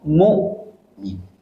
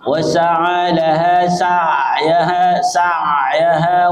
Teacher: Karena hamzah sifatnya syiddah, tertahan suara. Tertahan suara. Berbeda dengan ain sifatnya bainiyah, harus ada aliran suara.